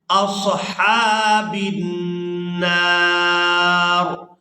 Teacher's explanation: صاد کو پورا ادا کریں گے، ہا کو کھڑی زبر کی وجہ سے کھینچ کر ادا کریں گے